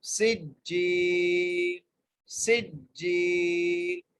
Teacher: جیم کو ایک الف کی مقدار کھینچ کے پڑھنا ہے کیونکہ یہاں پر جائے مدہ ہے، سجیل، سجیل، ایسے پڑھیں گے،